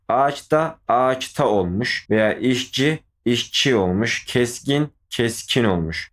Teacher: bir sözcükten sonra cdg ünsüzler inden biriyle başlayan bir ek geldiğinde cdg ünsüzleri sertleşerek sırasıyla çtk olur diyor bu ses olayın ünsüz benzeşmesi veya ünsüz sertleşmesi adı verilir